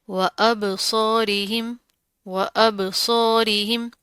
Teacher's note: با کے اوپر جزم آ رہی ہے، کلکلا کریں گے، جھٹکا دیں گے